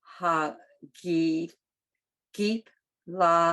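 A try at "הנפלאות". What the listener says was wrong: No, it's a nun. It's not a gimel. They're very similar, but it's a nun. Nif. Nif. It's a fey.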